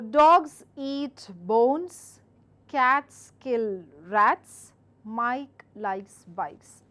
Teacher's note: Stress the nouns and let the tone fall at the end of the sentence.